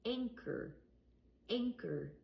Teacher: I didn't say the H sound and I didn't use ch.